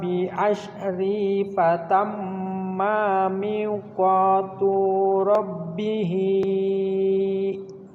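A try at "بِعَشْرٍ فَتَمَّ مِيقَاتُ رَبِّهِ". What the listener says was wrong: Bi asyrin, ikhfa itu ya, tanwin bertemu fa. Fatamma mi, maknya pendek, tuknya juga pendek.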